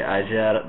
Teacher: The only difference between the English and this one is that in English usually the sh sound is rounding of the lips, and then in Argentina, Uruguay, depending on the speaker, it might not be rounded. So in my case, when I say ayer, there is no rounding of the lips.